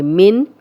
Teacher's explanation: نون ساکن کے بعد ان 6 حروف میں سے عین ہے تو عین آ گیا، حروف حلقی میں سے تو غنہ نہیں کریں گے۔ من، کلیئر آواز نون کی آئے گی۔